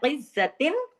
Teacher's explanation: ता दो से तिन पूरा अदा किया, कोई गुन्ना नहीं है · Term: इजहार